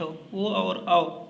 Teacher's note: ओ और औ इनका उच्चारण स्थान कंठोष्ठ होता है